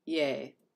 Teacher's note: it's written with a long vowel but it's like the shortest long vowel I've ever heard in my life